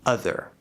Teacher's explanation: It sounds very similar to what we call the schwa, but it's very clearly enunciated. And that would be on this end of the range, where it's a fully enunciated, clear sound. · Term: upside down V